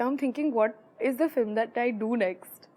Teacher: sing-song tone when they're speaking english it's quite difficult to describe your voice is kind of going up in the middle of a sentence but not in the same place that it would when a british person or an american is speaking · a lot of indian speakers will adopt a kind of a sing-song tone when they're speaking english